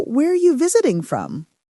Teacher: Where are is often contracted to where. The word are is reduced to a weak uh sound. It's very common in fast natural speech.